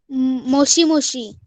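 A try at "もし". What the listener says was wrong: हाँ, मोशी. करेक्ट.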